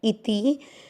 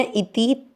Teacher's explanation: ई और ती दोनों मात्रा छोटी है, लंबा नहीं खींच रहे।